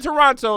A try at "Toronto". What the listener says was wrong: Toronto natives don't say the second T. It's Toronto. Yeah, Toronto, not Toronto.